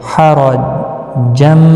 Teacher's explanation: را زبر کی وجہ سے پر پڑھا جائے گا